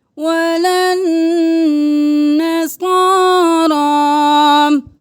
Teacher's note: تشدید ہے، غنہ، صاد بھی موٹا، را بھی موٹا